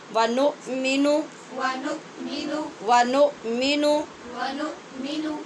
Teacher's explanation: نون کو بھی لمبا نہیں کرنا، یعنی نؤمنو نہیں پڑھنا